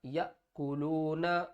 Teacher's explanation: وقف کی صورت میں نون ساکن ہو جائے گی